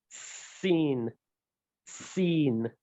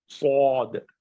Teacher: the letter Seen is plain. Seen. Seen. But the letter Sad is high. Sad. So O sound when you are pronouncing these letters. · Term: high letters